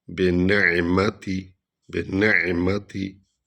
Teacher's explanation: عین جو ہے یہ حلق سے ادا ہوتی ہے، حروف حلقی میں سے ہے